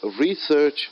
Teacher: So the word research is a noun. I'm stressing more on the word re, first syllable.